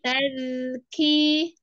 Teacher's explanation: Ujung lidah pada posisi ujung gigi seri atas. Keluar sedikit ya di digesek. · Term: huruf dal